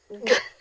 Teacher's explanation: The K, which sound like this, k, and the G, which sounds like this, g. They are both made in the same place in your mouth. In the back of your throat, where your tongue touches the soft palate, we call that velar.